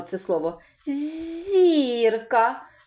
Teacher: який перший звук чуємо звук з М'який приголосний